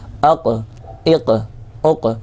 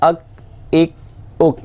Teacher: حمزہ قاف زبر اق، یاد رکھیے گا 2 نقطے والے قاف کے اندر ہمیشہ قلقلہ ہوتا ہے، جبکہ ڈنڈے والے کاف کے اندر قلقلہ نہیں ہوتا، تو ڈنڈے والے کاف کے اندر قلقلہ نہیں کرنا ہے، 2 نقطے والے قاف کے اندر قلقلہ کرنا ہے۔